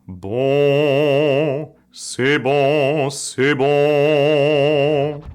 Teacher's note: Bei nasalierten Klängen, wie zum Beispiel im Französischen, bleibt ein Teil des Gaumensegels unten und ein kleiner Teil des Phonationsstroms kann eben auch durch die Nase dringen